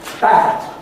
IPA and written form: bæd (bad)